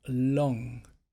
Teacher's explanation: the tongue for long moves to the top of the mouth at the back for that NG sound so it's long and then it releases to make the G